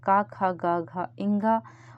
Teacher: कंठ से क वर्ग बोला जाता है।